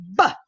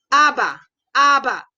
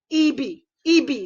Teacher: bunyi plosif bilabial bersuara ataupun letupan dua bibir bersuara ataupun hentian dua bibir bersuara